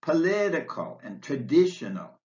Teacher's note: political and traditional stress on the second syllable